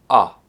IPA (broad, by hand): ʌ